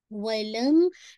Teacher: میم پہ اگین آپ نے ناقص غنہ کرنا